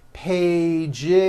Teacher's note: It's two pages with a voiced Z.